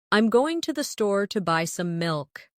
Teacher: Notice how certain words are stressed. Going, store, buy, milk. Now try repeating it with the same emphasis.